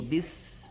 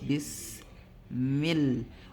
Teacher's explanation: let the whistling sound stop itself when the sin sukun is on